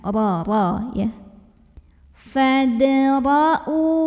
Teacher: Ro dibunyikan secara tafkhim karena ro-nya berbaris fathah. Maka bacanya ditebalkan, pangkal lidah dinaikkan.